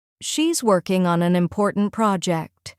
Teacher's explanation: Emphasize working and project.